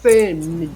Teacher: a gente fala mais forte a primeira sílaba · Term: paroxítona